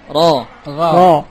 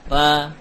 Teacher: arahkanlah suara ro maftuhah ke langit-langit supaya ada tafkhim shaut, ada suara yang tebal